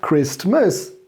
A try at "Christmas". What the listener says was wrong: Christmas. You don't pronounce the T.